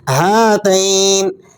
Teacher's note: ہاتین پر اگر آپ وقف کریں گے تو نون کو ساکن کر دیں گے، جب آپ وقف کریں گے تو اس یا کو کھینچیں گے، ہاتین، لیکن اگر آپ ملا کر پڑھیں گے تو پھر نہیں کھینچیں گے۔